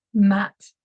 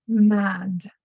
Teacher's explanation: Matt having an unvoiced consonant after the vowel is going to be shorter compared to the vowel in Mad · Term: pre Fortis clipping